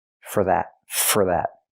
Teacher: We hear for pronounced as fur, because it's not a stressed word. For that. Not for that, but fur.